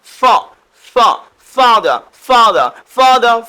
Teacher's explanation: উপরের দাঁত নিচের ঠোঁট হালকা প্রেস করে উচ্চারণ করতে হবে।